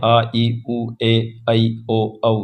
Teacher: जिन स्वरों का उच्चारण में मूल स्वरों के उच्चारण से दुगना समय लगता है उन्हें दीर्घ स्वर कहते हैं